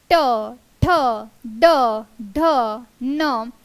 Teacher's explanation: मूर्धन्य वर्ण प्रकारा मध्ये ट वर्ग ट ठ ड ढ न आपण जेव्हा त्यांचा उच्चार करत आहोत तेव्हा आपली जीभ ट्विस्ट होत असेल आणि ती मुर्धा टच होत है